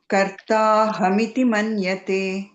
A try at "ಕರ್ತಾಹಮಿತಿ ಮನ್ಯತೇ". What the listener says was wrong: ಇಲ್ಲ ಮಾತಾಜಿ ಅಲ್ಲೇ ನೀವು ಹೇಳ್ತಾ ಕರ್ತಾಹಮಿತಿ ಮನ್ಯತೆ ಹೀಗೆ ಹೇಳ್ತಾ ಇದ್ದೀರಾ ಕರ್ತಾ ಅಹಮಿತಿ ಮನ್ಯತೆ ಅಂತ ಹೇಳಬೇಕು